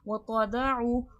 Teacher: वाव हुर्फ़ शफ़वी है, होठों से अदा होगा।